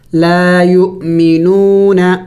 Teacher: حمزے کے اوپر سکون ہے تو قاعدہ اس کے لیے یہ ہے کہ جب حمزے کے اوپر سکون ہو تو پھر اس کو جم کر کے جھٹکا دے کے پڑھا جاتا ہے